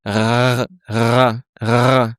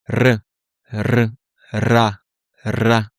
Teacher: le but ça va être plutôt de prononcer le R roulé avec une vibration de la langue. De l'air va passer entre ta langue et le palais.